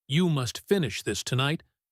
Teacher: the stress is on finish and tonight